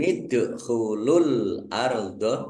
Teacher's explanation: [Musik] khirin yaulabahum [Musik] yaul ard ya fathah berdiri mad th'i panjang dua harakat dal sukun bacaan Qalqala dibaca memantul ditampakkan pantulannya. Alardho alif lam qamariah ditandai lamnya dibaca sukun.